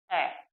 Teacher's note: आप यदि इसका उच्चारण करेंगे ए, तो मुख में जो हमारी जीवा है वह मध्य स्थिति में रहती है, बिल्कुल बीच में स्थिर रहती है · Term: मध्य स्वर